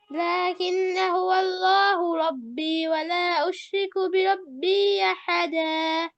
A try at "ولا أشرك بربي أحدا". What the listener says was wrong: বিরব্বিতে মাদ হবে আরেকটু হ্যাঁ আচ্ছা তো আপনার জন্য আলহামদুলিল্লাহ পড়া সুন্দর ছিল কিন্তু যে পরামর্শগুলো থাকবে সেটা হচ্ছে আপনি